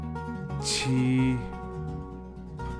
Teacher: sounds a little bit like the CH in church, but a little bit softer with the tongue close to the back of the teeth